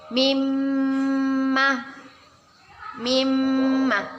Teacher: jika ada nun atau member tasydid kita sebut dengan iamt gunnah kita baca dengan berdengung dan ditahan dua harokat